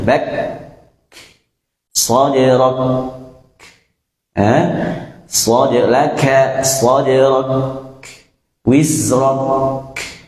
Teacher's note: Kalau huruf qaf setelah tertahan akan keluar sifat qalqalah, ya, falaqu, khalaqu. Nah, kalau huruf kaf bukan qalqalah, sifat hamsnya tadi, sifat mengeluarkan udara tadi.